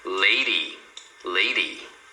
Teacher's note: Mesma coisa, agora é o D entre dois sons de vogal, então você fala como se fosse um R